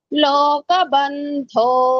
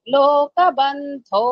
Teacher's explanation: దో మహాప్రాణము పైకి వెళ్ళాలి